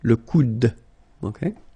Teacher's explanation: you don't insist on this final e, it only gives you the sound of d at the end.